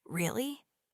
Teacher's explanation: The pitch goes up.